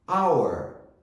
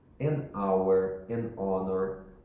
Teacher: Hour é um H mudo, então o primeiro som é esse A. A. Então, neste caso, eu não vou colocar o A, o artigo A, mas eu coloco o N.